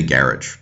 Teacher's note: You would put stress on the first syllable.